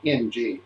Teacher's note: when you do a nasal consonant, a velar nasal like NG, the tongue is in the back of the mouth, all bottled up. The larynx is high, the throat is closed.